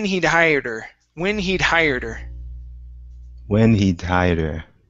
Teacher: you're going to drop the H on her and connect the to this D.